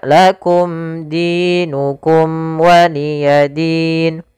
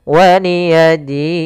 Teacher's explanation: Sukun arid sukun yang timbul karena wakaf. Maka waliyadin, di sini kita boleh memanjangkan 2 harokat atau 4 harokat ataupun 6 harokat. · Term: mad arid disukun